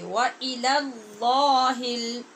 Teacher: پہلے لام کو باریک کیجئے، دوسرے کو پر کیجئے